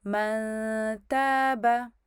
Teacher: تو اب میں کیا کروں گی، اب سنیں اچھا، من تابا، تو میں نے نون کا کو چھپایا، نون کا میں نے اخفاء کیا، اس کے بعد میں نے جیسے ہی میرا اخفاء ختم ہوا پھر میں نے تا کو ادا کر دیا